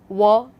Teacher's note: W would be bilabial, glide and voiced.